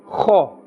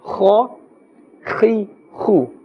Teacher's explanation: Kha has a scraping sound and a fuller sound. Kha. We must not say kha or khe.